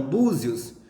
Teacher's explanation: você percebe que o O você fala mais intenso do que o I. Então, o I é a semivogal e o O é a vogal. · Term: ditongo crescente